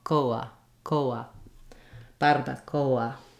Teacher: You don't want a long diphthong O like you would have in English.